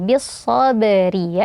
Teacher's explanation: Kemudian bis sabari ada ba sukun. Nah, di sini dibaca qalqalah, pantulkan suaranya